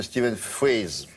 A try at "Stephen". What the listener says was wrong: Bah parce que tout le monde fait l'erreur. Ça s'écrit Stephen. Steven. Steven, absolument.